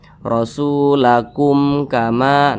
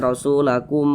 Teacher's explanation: huruf mim sukun bukan huruf ba di depannya bukan huruf mim maka bacanya itu tidak didengungkan hukumnya izhar syafawi